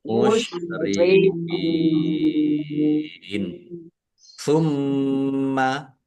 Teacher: mim tasdid dibaca ghunah atau mendengung